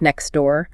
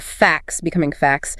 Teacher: The t just disappears to make it easier to say. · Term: elion